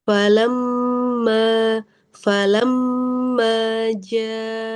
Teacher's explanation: mim tasdid gunahnya panjangkan lagi